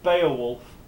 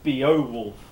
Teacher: these are falling diphthongs the stress is on the first element